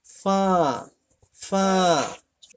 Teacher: এই দাঁতের আগা এই ঠোঁটের সাথে লাগিয়ে পড়তে হবে